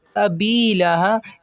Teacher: ابی لہا یہاں پہ ہائے سینے سے ادا کریں گے